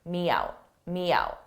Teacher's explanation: don't hear it when you're speaking at a fast pace but if you slowed it down you would hear the very slight Y in front of out · I use a soft y sound to combine two vowels, me out, yout.